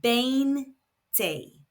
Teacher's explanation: 19, 20, 20 in Spanish is 20, spelled Veinte. Remember, in European Spanish, the V is pronounced B, like in brown · So this word is pronounced veinte. The stress is falling on the second to last syllable, which happens to be the first syllable.